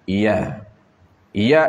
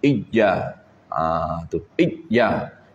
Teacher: Iya ini mesti tempat keluar dia di tengah lidah. Dan cara dia tak sampai kepada langit. Tak perlu kita naikkan huruf ya sampai ke langit.